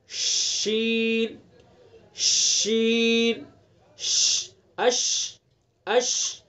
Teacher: شین کے ادا کرتے وقت آواز کا منہ میں پھیلنا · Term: تفشی